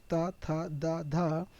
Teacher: दंत का मतलब है उच्चारण स्थान जो है वो दांतों से